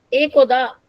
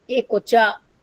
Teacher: Here, Do becomes Cho by palatalization.